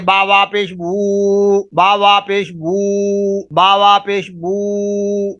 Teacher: الف مدہ واو مدہ یا جو مدہ جو ہیں، یہ جوف دہن منہ کے جو خالی حصہ ہے اس سے یہ حروف ادا ہوتے ہیں